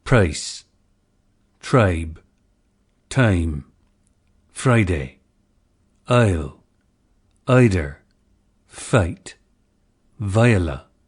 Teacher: number three the price and choice lexical sets this diphthong ii had a centered onset and started with the schwa or neutral vowel resulting in examples price tribe time friday isle ida fight viola